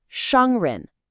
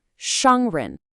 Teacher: We have a first tone followed by a rising second tone. So the first part is high and flat, 商, and then the second part, 人, goes up, almost like they're asking a question.